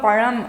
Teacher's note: பழம் அப்படின்னு சொல்கிறப்ப நாக்கு நல்ல பின்னாடி வளைஞ்சு போகும், அப்போ என்ன இருக்கும், சாஃப்டாக இருக்கும், அதுதான் சாஃப்ட் பெலைட்.